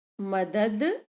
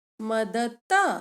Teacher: द सघोष और त अघोष